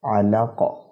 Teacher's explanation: قلقلہ کے 5 حروف ہیں، طا قاف با جیم دال، یہ قلقلہ جب ہوتے ہیں ان کا اصول، ان کا رول یہ ہے کہ قلقلہ کیا ہی جب جاتا ہے انہیں جب ان پر جزم آ جاتا ہے۔ وقف جب ہم اس پہ کریں گے تو قاف کے دونوں زیر ہٹ جائیں گے، قاف پر جزم آ جائے گا، اس صورت میں اس پر قلقلہ ہوگا